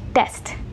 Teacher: in a lot of Indian English varieties, or a lot of Indian English speakers, they don't make that puff of air